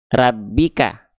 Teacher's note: Ah, maka sekedah kita lafalkan huruf ro itu getarannya eh ketika fathah itu terdengar malah seperti vokal o ya. Seperti vokal o.